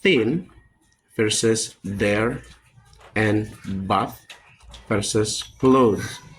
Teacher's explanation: Th is voiceless, z is voice. Both are dental fricative, made by placing the tongues between the teeth.